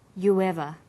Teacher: You ends with oo, a high back vowel, so it links with linking type 2, the W sound. It becomes you ever.